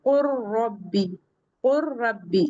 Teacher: जहां से हमारा लाम निकलता है उसी के आसपास से र भी रहेगा · इस लाम का रॉ में इदगाम हो जाएगा, ये इसमें मुदगम हो जाएगी। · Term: इदगाम मुतकारबैन